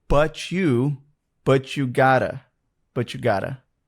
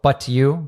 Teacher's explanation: when we have a T plus a Y where the Y is part of a function word which usually I think is with U it becomes a ch sound